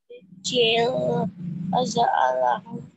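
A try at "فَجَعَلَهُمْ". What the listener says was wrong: Di situ faja bukan faza ya tapi faja faja'alahum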